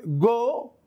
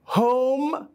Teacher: mouth and then you move to another sound which is o so you begin with ah then you end with o making one sound which is called o o this sound is different from a